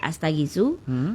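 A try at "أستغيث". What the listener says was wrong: Astaghits bukan pakai sunya enggak usah. Astaghits.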